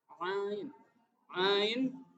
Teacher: Ain juga ada di tenggorokan Tengah bukan di bawah ya tapi di tengah